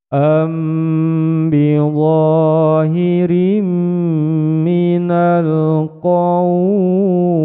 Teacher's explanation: mim sukun bertemu dengan huruf ba menjadi bacaan ikhfa safawi panjangnya dua ketukan